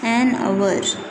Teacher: अब उसी तरह से हम इसको भी, कई लोग हवर पढ़ते हैं बट हम स्टूडेंट्स हम इसको हवर नहीं पढ़ेंगे, हम इसको आवर पढ़ेंगे, एच साइलेंट होगा हमारा